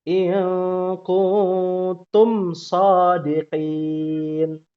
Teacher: mim bersukun dia tidak panjang